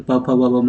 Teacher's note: वे व्यंजन जिनका उच्चारण दोनों होठों को मिलाकर किया जाता है ओष्ठ व्यंजन कहलाते हैं।